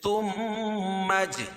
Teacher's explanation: میم مشدد غنہ ہوگا. اور اجعل جیم پر قلقلہ ہے.